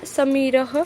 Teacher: जब जब स का उच्चारण होता है तो जीभ का कुछ भाग दांत पर जाकर स्पर्श करता है इसीलिए यह दंत वर्ग का है अहम कंठ मैं कंठ व